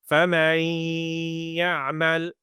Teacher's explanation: the noon sound gets merged into the or blended into the yah sound